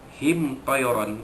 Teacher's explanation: izhar syafawi, ya, menyatakan mim mati bertemu huruf ta